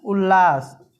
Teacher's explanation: ल में बदल जाएगा त तो यहां पे हो जाएगा उल्लास यदि त द के बाद ल रहे तो त द ल में बदल जाता है